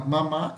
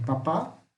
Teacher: Veja onde está o acento. Está na última sílaba. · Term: oxítona